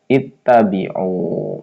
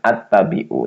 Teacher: Jadi alifnya dibaca kasrah ya.